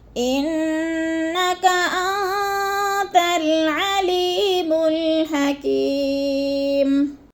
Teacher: ان کی نون مشدد ہے، سختی سے جباؤ کے ساتھ پڑھیں گے۔ · میم ساکن کو میم کو وقف کی صورت میں ساکن کر کے پڑھیں گے